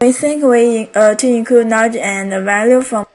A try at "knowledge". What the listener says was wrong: You want to say knowledge. J. Don't forget to pronounce that final J consonant sound.